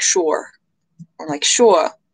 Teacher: I was told the East Coast is more open, like sure, or like sure, with less of the R.